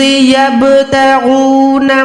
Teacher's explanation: बा साकिन होती है तो हमने आवाज़ को लौटाना होता है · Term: क़लक़ला